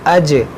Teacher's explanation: یہاں پر دیکھیں جیم میں قلقلہ کریں گے